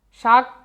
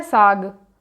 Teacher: जो तालव्य सा है वो दंती सा में प्रयोग हो गया है तो साग हो जाता है तद्भव शब्द